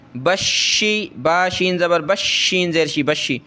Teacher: शीन के ऊपर ये तशदीद है तो हमने सख्त करना है